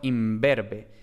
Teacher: la n se asimilaba a la siguiente consonante